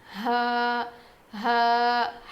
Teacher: حلق کے نیچے والے حصے سے ادا ہوتا ہے